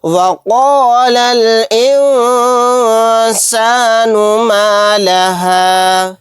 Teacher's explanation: نون ساکن کے بعد سین آ گیا، یہاں پر اخفا کا قاعدہ ہوگا، کیونکہ سین اخفا کے 15 حروف میں سے ایک حرف ہے۔ نون کی آواز کو ناک میں چھپا کر پڑھیں گے